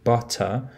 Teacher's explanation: in standard british english we pronounce the word butter with an alveolus stop in the middle in cockney another dialect of british english you pronounce the same